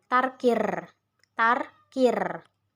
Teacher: tarkir itu menggetarkan ujung lidah dengan tidak berlebihan